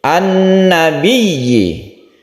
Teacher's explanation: alif lamnya tidak dibaca karena ada huruf syamsiyah atau huruf matahari, yaitu salah satunya adalah nun. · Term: idgham syamsiyah